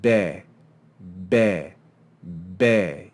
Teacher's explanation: you'll see that that sound is made with your lips. It's a labial sound.